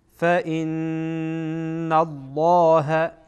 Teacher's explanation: فإن فاء فإن الله، اینجا نون مشدد غنه میشه